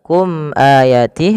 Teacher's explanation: Izhar syafawi yaitu suara mimnya dijelaskan. · Kemudian pada lafal kum ayatih ada mim mati bertemu hamzah, maka ini kita namakan dengan bacaan idhar syafawi. Idhar syafawi yaitu suara mimnya dijelaskan. Izhar artinya jelas, syafawi berkenaan dengan bibir kita.